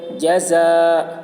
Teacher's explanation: جزاء، حرف مد کے بعد حمزہ اسی کلمہ میں ہے، اس لیے مد متصل ہوا، مد متصل کو 3 یا 4 الف کے برابر کھینچ کر پڑھیں گے۔ جزاء، تنوین کے بعد حروف حلقے میں سے ہا آ رہا ہے، اس لیے تنوین کو ظاہر کر کے بلا غنہ کے جلد پڑھیں گے، اس کو اظہار کہتے ہیں۔